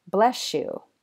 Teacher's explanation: It's due to a feature of connected speech called coalescence, which is what happens when two separate sounds merge to form a new, different sound. So here, sometimes a final s sound in a word and an initial y sound in the following word combine to make a sh sound at the boundary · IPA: /ʃ/